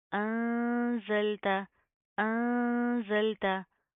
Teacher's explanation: زا کے اندر سختی پائی جاتی ہے ٹھیک ہے اس کو آپ نے زال کی طرح نرمی سے ادا نہیں کرنا